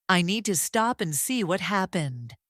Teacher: Need has the long e. Stop has the ah. Happened has the short a and the uh.